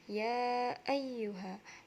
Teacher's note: dibaca panjang satu alif atau dua alif atau dua setengah alif, karena hamzah bertemu dengan salah satu huruf mad tabi'i, yakni pada kata ya ayyuha. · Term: mad jaiz munfasil